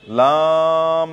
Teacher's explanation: লামের মধ্যে মদ কত আলিফ সেটা 3 আলিফ লম্বা করে পড়া